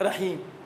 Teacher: چونکہ زیر ہے، زیر ساکن میں تبدیل ہوگا، رحیم ہوگا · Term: وقف اسکان